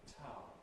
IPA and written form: tʰaʊn (town)